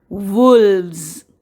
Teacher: the S sounds like the buzzing sound